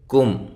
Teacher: کاف کو باریک، میم ساکن کا اظہار